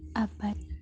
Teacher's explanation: pada posisi akhir fonem D yang lazim dilafalkan sebagai bunyi T